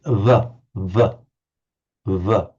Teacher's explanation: When we pronounce in English v, we have the lower lip against the upper teeth.